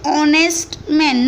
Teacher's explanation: Here when we pronounce this word honest, H becomes silent.